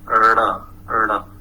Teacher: The flap is a sound that is made by a quick noisy movement. So when we produce this rada sound, it is very quick and noisy. So the name is flap. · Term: retroflex flap sound